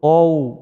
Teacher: Bacaan mad lain, bacaannya lentur, qaw, a ke u.